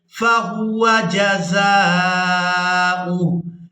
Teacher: اب یہاں پر ہم نے وقف کرتے ہوئے ہا کو ساکن کر دینا ہے، حمزہ کو اس ہا ساکن کے ساتھ ملائیں گے